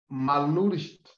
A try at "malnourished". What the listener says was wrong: No. Malnourished. So you don't pronounce that you. Malnourished.